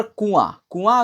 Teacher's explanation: नाक से बहुत कम सांस निकलती है, कुआं मुंह से अधिक निकलती है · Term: अनुनासिक